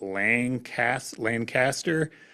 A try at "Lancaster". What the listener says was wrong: You run it all together, it's Lancaster. So not a Lancaster. all run together.